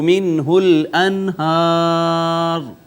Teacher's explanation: نون ساکن کے بعد حرف اظہار ہا آ گیا، لہٰذا اس پہ ہم نے اظہار کیا